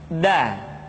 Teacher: Da diucapkan dengan menyentuhkan ujung lidah kita dengan bagian gusi-gusi dua gigi seri bagian atas. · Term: huruf da